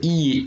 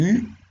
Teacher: la différence entre I et U, la seule différence, c'est le fait que les lèvres sont arrondies ou pas. Parce que le point de pression, il est au même endroit dans la bouche.